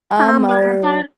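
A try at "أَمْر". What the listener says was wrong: کھینچنا نہیں ہے. جب بھی زبر کے بعد آپ وقف کریں گے تو اس کو جلدی کے ساتھ کریں گے. امر.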